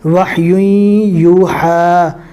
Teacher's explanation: تنوین کے بعد ادغام باگنہ کے 4 حروف ہے، یا واو میم نون، اس میں سے یا آ گیا، لہٰذا یہاں پر گنہ کر کے پڑھیں گے